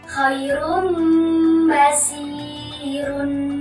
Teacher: Iklab adalah apabila ada nun sukun atau tanwin bertemu huruf ba. Cara membacanya yaitu huruf nun sukun ditutup ditukar atau dibalik menjadi huruf mim. Contohnya, bertemu ba, khairun basirun.